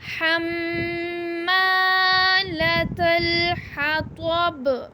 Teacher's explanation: میم کے ساتھ الف ہے اور الف کو بھی ہم ایک الف کے برابر لمبا کریں گے، میم پہ غنہ کریں گے اور الف کو لمبا کریں گے ایک الف کے برابر۔ حمالۃ الحطب، حطب، اس کو ہم حطب نہیں پڑھیں گے کیونکہ یہ طا ہے۔ · میم مشدد ہے اور میم مشدد پہ ہم غنہ کریں گے۔ میم کے ساتھ الف ہے اور الف کو بھی ہم ایک الف کے برابر لمبا کریں گے، میم پہ غنہ کریں گے اور الف کو لمبا کریں گے ایک الف کے برابر۔